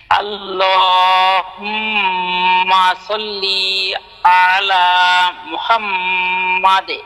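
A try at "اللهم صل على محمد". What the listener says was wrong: সল্লি, লির মধ্যে হালকা একটু টান বেশি পড়ে গেছে। সল্লি, টান নাই।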